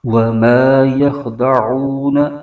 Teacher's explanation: اس میں خا کو پر کر کے پڑھیں گے اور عین کو حلق کے درمیانی حصے سے ادا کریں گے،